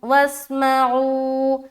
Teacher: वाव को सीन में मिला दिया। पहले तो यहाँ पर हमने इदगाम नाक़िस किया, उसके बाद गुन्ने के साथ इदगाम, उसके बाद वाव को सीन से मिलाया, मीम को ज़बर के साथ पढ़ा, आइन वाव पेश ऊ, वाव मद्दा किया।